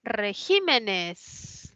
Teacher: Que tiene la mayor fuerza de voz en la I, es esdrújula, colocó tilde.